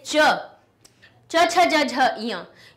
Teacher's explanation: इन सभी की ध्वनि तालु से निकली।